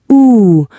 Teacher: For the long ooh sound in food, your lips are very rounded and tense. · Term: long, tense sound